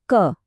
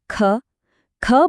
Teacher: જેમાં ઓછો શ્વાસ કે ઓછ છી હવા નીકળે એ અલ્પપ્રાણ અને જેમાં વધારે હવા નીકળે એ મહાપ્રાણ